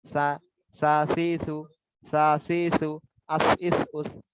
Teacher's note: জিহ্বার আগাটা উপরের যে দুটা দাঁত রয়েছে, উপরের দুটা দাঁতের আগার সঙ্গে একটু সামান্য লাগবে। জিহ্বার আগা উপরের দুই দাঁতের আগার সঙ্গে লাগে।